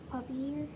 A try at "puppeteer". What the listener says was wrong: Not puppy ear, puppet ear.